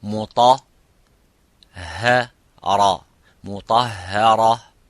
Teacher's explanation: Muta is the mufakham, which is full mouth. Ra is strong, full mouth. But the ha is empty mouth. Muta ha ra.